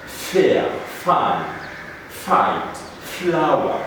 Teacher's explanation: air is stopped by pushing the bottom lip and top teeth together · it is voiceless there is no vibration on the vocal cords when we say these words or this sound